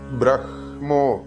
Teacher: ശ്രദ്ധിക്കേണ്ടത് ബ്രഹ്മോ ഇവിടെ ബ്രഹ്മം എന്ന് എഴുതിയിട്ടാണ്ഉള്ളത് ഹ പ്ലസ് മ ആണ് പക്ഷേ മന്ത്രങ്ങളെല്ലാം ഉച്ചരിക്കുമ്പോൾ മ പ്ലസ് ഹ ആണ് ഉച്ചരിക്കേണ്ടത് എഴുതുമ്പോൾ ഹ പ്ലസ് മ ആണെങ്കിലും നമ്മൾ